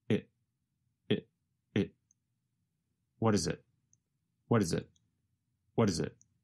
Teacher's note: The letter T in what changes to a sound closer to the letter D. And the word it goes by so fast that it becomes very reduced to just a vowel sound plus a very fast held T.